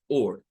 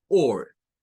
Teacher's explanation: La primera suena a or. Es más parecido a una O, pero recortada. Es la O con un glottal stop que le hacemos como O. Eso significa este símbolo que parece una C, pero es una O que le falta un pedacito, como que se lo cortaron o se lo rebanaron.